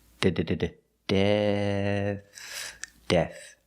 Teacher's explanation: we start with a D with the tongue back behind the teeth · With death, we have the same vowel, the short E, the sound like head and bed, but the last sound is a TH. This is a voiceless TH. It's just air.